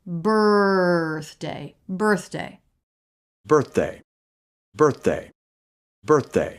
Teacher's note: the word birthday we have first syllable stress and it's all R it's the r vowel consonant combination so